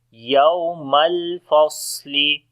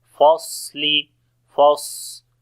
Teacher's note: on the swad we make hams and safir quality